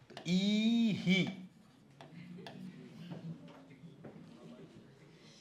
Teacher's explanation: સ્વર જેવો એવો જ વિસર્ગ નું ઉચ્ચારણ થાય આ હોય તો હા ઈ હોય તો પછી ઈહ નહિ ઈહી